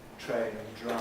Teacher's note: The TR-DR ones make a special kind of affricate in English.